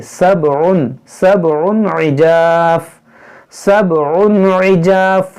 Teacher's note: عین ہے تو اس کو ہم نکالیں گے وسط حلق سے